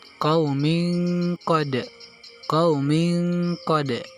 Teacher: bacaan pada huruf-huruf qalqalah dengan bunyi seakan-akan berdetik atau memantul